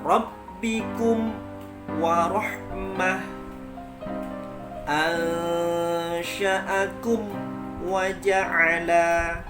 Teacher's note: Karena mim dan waw makhrajnya sama, maka dikhawatirkan ada pergesekan yang langsung sambung dengan huruf waw. Rabbikum wa rabbikum wa, itu tidak boleh.